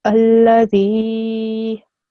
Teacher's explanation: ya is a mud letter, so the dal needs to be prolonged.